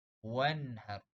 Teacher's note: Salah, itu dengung. Izhar halki, cara baca dia jelas dan nyata. Kita jelaskan sebutan nun mati ataupun baris.